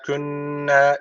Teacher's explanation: şeddeli nun var. Mutlaka bir elif tutuyoruz.